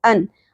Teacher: غثاء، حمزہ کے اوپر 2 زبر تنوین ہے، ان، اور یہاں پر اظہار ہوگا یعنی ان کی آواز آپ نے کلیئر کر کے پڑھنی ہے